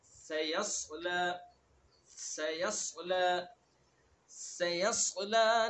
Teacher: پہلے سین ہے پھر یا اس کے بعد صاد. مخرج دونوں کا ایک ہے سین اور صاد کا